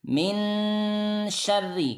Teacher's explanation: Jadi kalau ada nun sukun atau tanwin an bertemu salah satu dari 15 huruf, maka dia disamarkan nunnya disertai dengan gunnah, dengung. Jadi nunnya tidak jelas. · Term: ikhfa